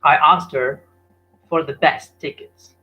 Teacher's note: now the best the T is missed out so the T in the word best is missed outdoors deleted